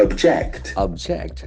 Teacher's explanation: the accent Falls the second syllable